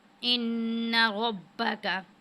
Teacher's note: नून मुशद्दिद है, यहाँ पे हमने गुना किए और रॉ को हमने पुर पढ़ा है